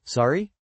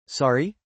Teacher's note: With a rising tone, like a question, sorry? It immediately tells the other person, hey, I didn't catch that.